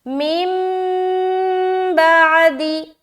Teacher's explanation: تو ہم نون کو میم سے بدل کر پڑھتے ہیں۔ یہاں پر جو نون ہے نا، اس کو میم سے بدل دیتے ہیں۔ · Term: اقلاب